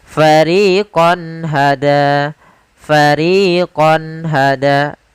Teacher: Pada kata fariqon hada, di sini ada fathatain atau tanwin bertemu dengan ha, maka suara konnya harus jelas, tidak boleh ditahan dengan gunnah. Karena izhar adalah menjelaskan, menampakkan suara nun sukun dan tanwin dengan jelas tanpa disertai gunnah.